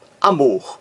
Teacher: a palavra amor tem um acento tônico na última sílaba. Mor, amor, mais forte.